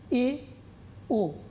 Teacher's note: এ এবং ও যখন উচ্চারণ করছো, জিহ্বার অগ্রভাগ একটুখানি পেছনে চলে এসছে, কিন্তু একেবারে পেছনে আসেনি।